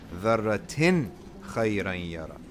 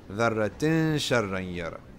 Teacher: ikhfa is that French nasalized noon that ends up dancing in your nose and not coming out off your lips. All right? Nor going straight into the next letter.